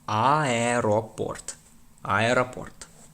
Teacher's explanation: Be careful not to say airport. The e must be pronounced separately from the a.